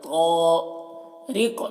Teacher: مت تو کو موٹا کر کے پڑھیں گے، طارق، را کو باریک پڑھیں گے، اور یہاں پر بھی قاف کو پر پڑھنا ہے اور اسے میں قلقلہ کرنا ہے۔